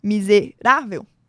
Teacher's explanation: a penúltima sílaba é a tônica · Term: paroxítona